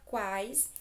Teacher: semivogal u vogal a semivogal i também oral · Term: tritongo